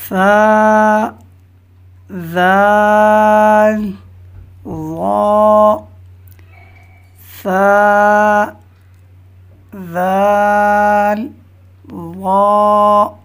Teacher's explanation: اس میں 3 حروف ہیں جو کہ زبان کا سرا اور اوپر کے دانتوں کے اندرونی کنارے سے ادا ہوتے ہیں۔ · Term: حروف لثویہ